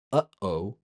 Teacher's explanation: that little pause in the airflow in phrases like uh-oh. You can feel the air catching at the top of your throat.